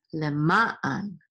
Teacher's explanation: And this is an ayin with a patach, and then the nun sofit at the end, so it says an, le, ma, an. And the trope or accent is on the second syllable over ma